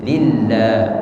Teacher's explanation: Kalau sebelumnya kasrah maka dibaca tarqiq, tipis.